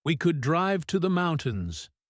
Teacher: they repeat what person A said, but they say it with a flat, quiet voice.